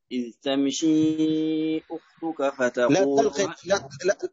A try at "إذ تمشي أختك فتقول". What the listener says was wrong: لا تقلقل الميم.